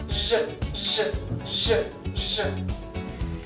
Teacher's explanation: Звук Ж, он имеет такое же положение языка, только кончик языка поднят чуть выше к небу. Язык вибрирует под напором воздуха, и воздушная струя направлена в небо.